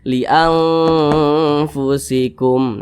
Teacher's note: Cara bacanya itu disamarkan, kemudian juga didengungkan. Didengungkan itu suaranya itu kita tahan atau kita panjangkan kira-kira 2 harokat, kira-kira 2 ketukan atau 2 harokat. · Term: ikhfa hakiki awsat